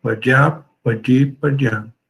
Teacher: a semivogal ya antes do i, como são muito próximas, a semivogal acaba sendo eliminada